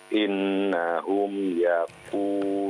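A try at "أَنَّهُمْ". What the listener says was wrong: Annahum, bukan innahum ya Pak ya. Annahum.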